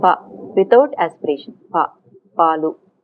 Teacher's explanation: Palu we don't aspirate, right? So voiceless unaspirated, it's there in English also, but in certain positions, not word initial position. So in voiceless unaspirated plosives, at the time of release the voicing starts.